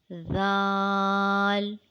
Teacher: It is pronounced when the tip of the tongue comes out and touches the tip of the top front two teeth.